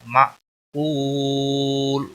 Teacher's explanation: واو مدہ ہے، ایک الف کے برابر کھینچ کر پڑھیں گے. وقف کی صورت میں لام ساکن ہوگا تو 3 سے 5 سیکنڈ وقف کی صورت میں لمبا کر کے وقف کریں گے.